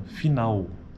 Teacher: a vogal tônica, nesse caso da palavra final, está na vogal A, né, do final da palavra.